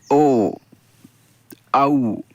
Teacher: बिना कंठ और बिना होंठ झुकाए हम इसका उच्चारण नहीं कर सकते, इसलिए कंठ और ओष्ठ से ओ औ हमारे बोले जाएंगे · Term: कंठ ओष्ठ